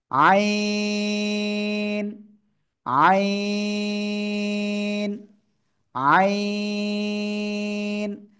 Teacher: এই অক্ষরটা গলাটার ভিতর থেকে আওয়াজ আসবে সেটা চেপে ধরতে হবে ধরে এক দুই তিন চার আলিফ টেনে পড়তে হবে